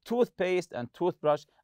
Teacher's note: toothpaste and toothbrush are compound nouns, and we stress the part of the tooth